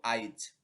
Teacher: যে এক্ষেত্রে আই অর্থাৎ ই ধ্বনিটি যে এর আগে এসে পড়েছে আজি হয়ে গেল আইজ আজি শেষে ই আগে উচ্চারিত হলো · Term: অপিনিহিতি